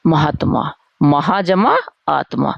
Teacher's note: दीर्घ संधि का जहां दो दीर्घ आ को मिलाकर एक दीर्घ हो गया